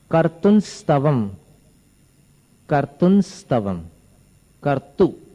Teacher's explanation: इसके ऊपर जो अनुस्वार है उसका उच्चारण न जैसा है